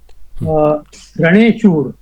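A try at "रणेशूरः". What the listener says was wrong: Raneshuraha, Ranashuraha, Saptami Tatpurusha. But you should don't do halant like that, Raneshur. So you please read it as Raneshuraha, and you should just not say Sapta, you should say Saptami Tatpurushaha.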